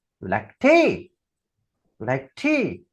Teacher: आता हा प्रश्न येस नो टाइप क्वेश्चन आहे ना, म्हणून टी शब्द हा तुम्हाला राईज करायचा आहे. · It consists of rise in the voice from a fall pitch to a very high one. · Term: रायझिंग इंटोनेशन